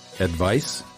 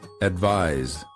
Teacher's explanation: the first word of the pair ends with the voiceless consonant and the second with the voiced one notice the difference in vowel length